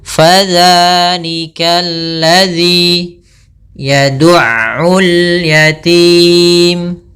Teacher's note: Fa tadi kelupaan, yaitu jangan sampai dipantul, jangan sampai pa dengan p, tapi dia fa, aliran nafasnya mengalir